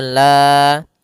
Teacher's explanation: alla ada bacaan mad thabi'i panjangnya dua harakat